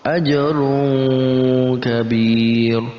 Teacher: Selanjutnya wa ajrun kabir, tanwin bertemu dengan kaf, maka masuk dalam kategori ikhfa, kita samarkan bacaannya dengan ang